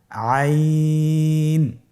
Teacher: আইন হরফটি কণ্ঠনালীর মধ্যখান থেকে উচ্চারিত হয়।